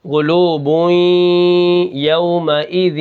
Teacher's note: قلوبوئیں یومئذ وا، ٹھیک ہے، جیم زیر جی، اب یہاں پر دیکھیں دو زیر کو میں نے واو کے ساتھ ملایا، یہ میں نے ادغام کیا، ادغام ناقص ہو رہا ہے، یہاں پہ غنہ جو ہے نا یہ ناقص ہو رہا ہے، ریوں پوری آواز ناک میں نہیں جا رہی، لیکن ایسا لگ رہا ہے کہ ناک میں آواز ہے، ٹھیک ہے، قلوب یومئذ، ٹھیک ہے، یہاں پر یا آ گئی تو ناقص آواز ہے، واو آ گیا تو ناقص آواز ہے۔